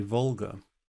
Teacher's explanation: the tongue is sort of on the ridge of the hard palate, you know, so it's a bit further back, which makes it sound somehow sort of fatter. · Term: English L